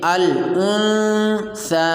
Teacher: نون ساکن پر اخفاء ہوگا اور اس میں نون کی آواز کو چھپائیں گے